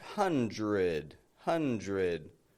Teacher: I'm not pronouncing that D